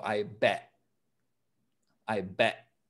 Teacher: often when when a word ends with t we sort of stop the pronunciation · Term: we don't finish the t sound